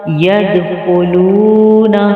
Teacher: دال پہ قلقلہ کریں گے، خا کو موٹا پڑھیں گے اور واو مدہ کو ایک الف کی مقدار کے برابر کھینچ کے پڑھیں گے۔